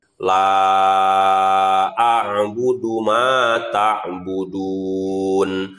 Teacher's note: Jadi dibacanya la, itu dibacanya 5 ketukan. Ma dibacanya 2 ketukan.